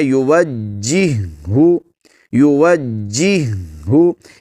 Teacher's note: اب اس کو یوجہو نہیں پڑھنا اور نہ ہی یوجہو ایسے پڑھنا ہے، بلکہ اس کو پڑھنا ہے یوجہو، یوجہو، یعنی جیم کو ہم نے جماؤں کے ساتھ ادا کرنا ہے، مشدد حرف ہے۔ اس کے بعد ہا کو، کیونکہ یہاں پر دو ہا، یہ ہا جو مشدد ہے پچھلی ہا کا اس میں ادغام ہو چکا ہے، تو اس کو ایسے ہی پڑھنا ہے یوجہو شیئن وہو کل علی مولاہ اینما یوجہو لا یأتی بخیر، اینما یوجہو لا یأتی بخیر۔